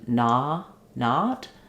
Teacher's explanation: When I open to not, much more open, the tongue is pressing down to make a lot of space for that vowel